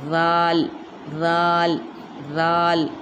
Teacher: इसके बाद है ज़ाल, ज़बान का किनारा और सनाए उलिया की किनारों से, यानी सा और ज़ाल इन दोनों के मखरज एक जैसे हैं। ज़ाल में भी अपनी ज़ुबान थोड़ी दिखेगी बाहर, ज़बान का किनारा अपने दांतों पर रखेंगे, ऊपर के 2 दांतों पर